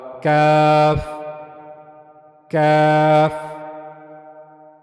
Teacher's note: کاف کو ادا کرنے کے لیے ہم جو اوپر والا سخت والا حصہ ہے اس کو استعمال میں لائیں گے اور وہاں سے کاف ادا ہوگا